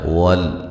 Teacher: लाम साकिन का इज़हार यानी कि लाम को हिलाना नहीं है